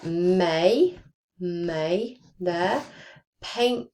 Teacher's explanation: so it's e and i combined but we're gliding them together. We're not going e.